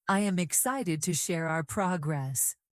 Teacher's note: This tone has a small rise, a little more energy, and a feeling of enthusiasm. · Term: positive tone